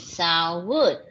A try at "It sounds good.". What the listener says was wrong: Sounds with S. It sounds good.